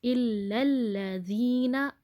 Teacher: اسی طرح سے الا الذین، اب آپ کو یہاں پر بیچ میں الف نظر آ رہا ہوگا، لیکن پیچھے دیکھیں لام کی زبر کو فوراً اگلے لام سے ملانا ہے کیونکہ اگلے لام پر تشدید ہے، الا الذین، یہ الف لکھنے میں آ رہا ہے، پڑھنے میں نہیں آئے گا۔